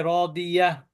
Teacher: শব্দের শেষে গোলতা থাকলে থেমে গেলে সাকিনওয়ালা হা হয়।